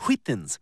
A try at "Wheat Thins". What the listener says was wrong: Why are you putting so much emphasis on the H?